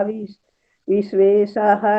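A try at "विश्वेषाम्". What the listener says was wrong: सुना, विश्वेश, शाह के ऊपर बिंदी है, विश्वेशाम, वो दूसरी तरह लिखा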